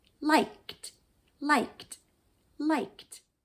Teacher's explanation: So what English prefers to do is put the k with no vocal cords movement next to another sound that has no vocal cord movement. The other sound with no vocal cord movement is a t.